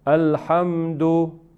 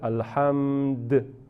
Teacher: Si la palabra termina con las vocales cortas, es decir, fatha, kasra y dhamma, a, i, u. Entonces, lo que hacemos, lo convertimos, lo cambiamos las vocales cortas con una sukun.